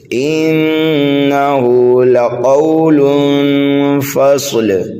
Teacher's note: قاف کو ہم پر کر کے پڑھیں گے مستعلیہ میں سے ہونے کی وجہ سے